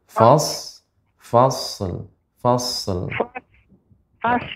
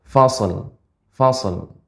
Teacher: kita berikan Shad sifatnya tebal mengalir